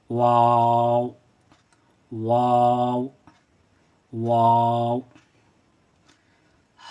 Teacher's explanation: इसका ऊपरी हिस्सा थोड़ा मुड़ा हुआ होता है और नीचे का हिस्सा गोल किया हुआ होता है। और ये अदा जब होता है तो दोनों होठ गोल हो जाते हैं